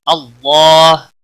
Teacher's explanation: اللہ کے لام کے پچھلے حرف کے اوپر زبر ہے، اس لیے لام کو موٹا پڑھیں گے، اس کے اوپر کھڑی زبر بھی ہے، ایک الف کے برابر کھینچ کر پڑھیں گے۔